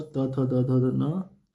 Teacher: जिनका उच्चारण इस ऊपर की दांतों पर जीभ लगाने से होता है उसे कहते हैं वो दंत।